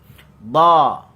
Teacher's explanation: pangkal lidah terangkat dan di tengah lidah ada lekukan. At-taqa'ur fil lisan. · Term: Huruf dad